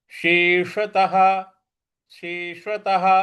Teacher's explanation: शलजम वाले श को जीभ को रोल करके बोलेंगे श और जो षट्कोण वाला श है उसमें हम जीभ को रोल भी करेंगे और साथ में मूर्ध्वा पे भी ले जाएंगे · शेषतः शेषतः देखिए और त के बाद जो विसर्ग है इस विसर्ग के आगे कोई अक्षर नहीं है इसलिए इसका उच्चारण हमें ह ले आना है